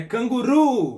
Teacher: Canguru, ou seja, o ru, aqui no final, é a sílaba mais forte. Então, é a sílaba tônica de canguru.